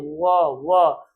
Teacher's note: होठ भी गोल और दांत से हमारी ध्वनि टकरा के निकल रही है। इसलिए ऐसे वर्ण को हम दंतोष्ठ कहते हैं। · दंत मूल ल को भी बोलते और दंत ओष्ठ यानी कि व का उच्चारण हम दांत और ओष्ठ दोनों को मिलाकर के उच्चारित करते हैं।